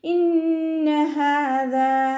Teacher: നൂനിന് ശബ്ദ വന്നു. അക്മൽ ഉന്നയാണ്, നല്ലോണം മണിച്ചു കൊടുക്കുക.